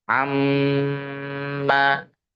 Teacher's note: ketika ada nun tasydid atau mim tasydid dibacanya ditahan dulu dua sampai tiga harakat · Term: ghunah musyaddadah